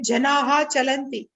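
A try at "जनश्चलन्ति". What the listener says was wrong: Visarga will become Sha. Janash Chalati. Janash Chalati. Janash.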